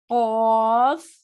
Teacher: قاف، یہ 3 حرف والا ہے، قاف، موٹا ہے اور حلق کے پاس سے نکلتا ہے